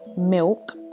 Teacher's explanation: pronouncing L as W